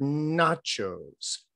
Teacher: n a that would be more like that word nachos where the n is being made because the tongue is more at the what is called the palatal or at the cerebral actually right at the roof of the mouth not at the teeth